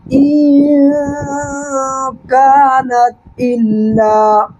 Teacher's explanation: الف سے پہلے کاف پر زبر، الف مدہ، اس کو 1 سیکنڈ کھینچنا ہے · یہ 15 حروف تنوین یا نون ساکن کے بعد جب یہ 15 حروف میں سے کوئی بھی ایک حرف آ جائے، جیسے یہاں پر کاف آیا ہے، تو نون کی آواز کو ناک میں چھپا کر کے پڑھیں گے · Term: حروف اخفا